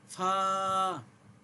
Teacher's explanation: নিচের ঠোটের পেট সামনের উপরের দুই দাঁতের আগার সঙ্গে লাগিয়ে একটি হরফ উচ্চারিত হয়